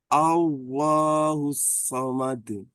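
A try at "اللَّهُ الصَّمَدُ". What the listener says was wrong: Shotnya tebalkan lagi. Allahus somad.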